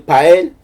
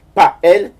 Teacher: il y a une rupture, un coup de glotte, comme on dit